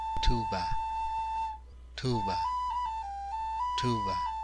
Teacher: It is between the English B and the English V